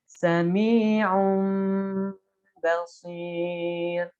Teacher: Jadi pengucapan nun mati atau tanwin menjadi mim saat bertemu dengan huruf ba. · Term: iqlab